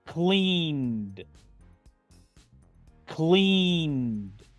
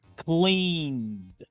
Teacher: En pasado simple es cleaned, cleaned. Pronuncio la ed como una D, dejando esta E muda.